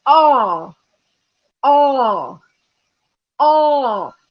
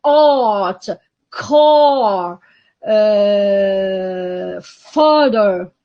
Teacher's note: it is rather the back, low, long, and rounded ah, as in art, car, father